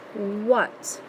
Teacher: I'm not hearing ah, and I don't hear A, I actually hear almost like the short U sound